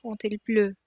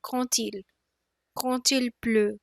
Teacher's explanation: Et, you'll notice that in French, quand, which means when you when there is a vowel after it, it gives a sound of as if there was a T in the end. Quand il pleut.